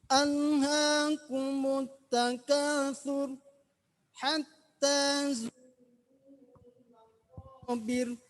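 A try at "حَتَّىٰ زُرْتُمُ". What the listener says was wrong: Coba zurnya ditebalkan lagi.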